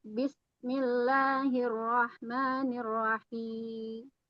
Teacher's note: Misalnya huruf mim. Huruf mimnya ini tidak terdengar sama sekali.